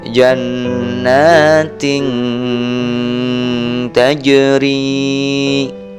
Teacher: membunyikan huruf nun mati atau tanwin dengan samar-samar dengan bunyi sengau sepanjang 2 ketukan · setelah tanwin atau kasrotain bertemu huruf ikhfa berupa huruf ta, maka dibaca samar-samar